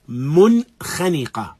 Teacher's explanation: Although this is one word, noon as-sakin is clear.